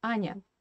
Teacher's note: Very, very short, small E, kind of ghost E